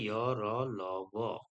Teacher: जिन व्यंजनों जिन वर्णों का उच्चारण स्वरों एवं व्यंजनों के बीच का लगता है और इनके उच्चारण के समय मुख के कोई भी दो अंग मुख के कोई भी दो अंग एक दूसरे का पूरी तरह से स्पर्श नहीं करते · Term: अंतस्थ व्यंजन